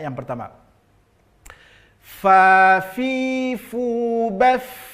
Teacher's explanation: Fa tidak, tapi ujung gigi seri atas tempelkan ke bibir bawah, fa. Maka jelas nanti tampak sifat hamas, mengalir nafas ketika membunyikan huruf fa.